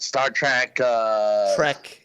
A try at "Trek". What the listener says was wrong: Trek. Say Trek. There's no A in it. There's no A in it.